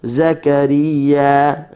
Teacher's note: za hujung lidah berada di dalam. Satu makhraj dengan sin, satu makhraj dengan sad. Tapi yang membezakan mereka adalah sifat lah.